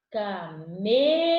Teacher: Isso significa que nessa palavra, a letra E, ela vai ser pronunciada de maneira fechada, mais grave.